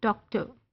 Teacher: British English में R is not pronounced, उसको वो डॉक्टर नहीं कहते, वो उसको डॉक्टर कहते हैं, डॉक्टर। अब वो जो एंड पे अ की साउंड मामूली सी आई है ना, दैट इज शॉ साउंड। अब इसमें ये आर की साउंड शॉ से हो रही है।